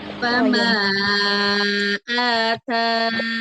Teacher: Tapi nunnya jangan terlalu mengalir ya. Karena dia sifatnya bainiyah, bukan rokhawah.